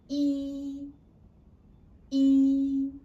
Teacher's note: flat tone is a high-pitched tone